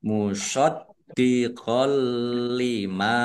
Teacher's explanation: fathah tanwinnya tidak dibaca lamnya dibaca dobel tidak mendengung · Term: idgham bila ghunah, idgham bila gunnah